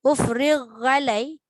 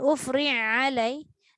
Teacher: Ghain ada isti'la, iaitu mengangkat pangkal lidah supaya tebal. Ain ni hurufnya nipis.